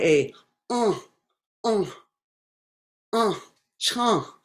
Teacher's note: all the air is coming through my throat and nothing is coming through my nose